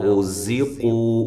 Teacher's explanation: را کو موٹا، زا کو زور کے ساتھ سیٹی کے ساتھ